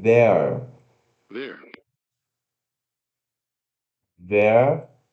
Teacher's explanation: se pronuncia TH vozeado, E, schwa, R